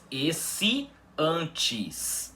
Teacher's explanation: Quando o E fica fraco em português, no final, né, em sílabas átonas finais, ele fica com som de I.